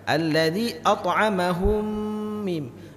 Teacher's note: Mim mati berjumpa dengan mim, harus lama.